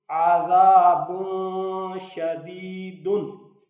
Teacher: आइन ज़बर आ, ज़ाल ज़बर अलिफ ज़ा, आज़ा, बा दो पेश बुन, आज़ाबुन, शीन ज़बर शा, आज़ाबुन शा, दाल ज़ेर या दी, दाल दो पेश दुन, आज़ाबुन शदीदुन। बा के ऊपर दो पेशे हैं यानी तनवीन है, उसके बाद शीन है तो यहाँ इख्फा होगा। उसके बाद इधर जाल, इधर सीटी की आवाज़ से बचना है, इधर सीटी की आवाज़ नहीं होनी चाहिए।